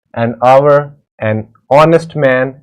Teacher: It will be noticed that the words hour, honest, air begin with a vowel sound as the initial consonant H is not pronounced